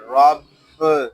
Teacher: یہاں با مشدد ہے اس کو جماؤ کے ساتھ ادا کریں گے